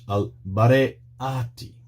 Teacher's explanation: The word is al-bare'ati, with the glottal stop there, underlined in yellow.